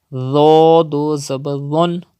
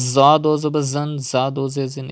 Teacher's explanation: Tho is also pronounced without whistle sound and with thicker voice